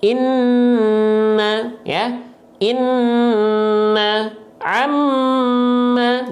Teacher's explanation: kalau nun dan mim karena dia ada hukum gunnah, maka dia ditahan 2 harokat.